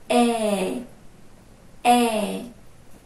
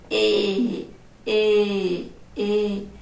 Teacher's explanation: Já no som fechado, a boca abre menos e ele é anasalado.